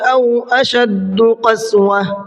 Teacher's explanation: کالحجارۃ او اشد قسوہ، اشد کے شین کو جو ہے تھوڑا سختی سے پڑھنا ہے اور اس میں سیٹی بھی ہوتی ہے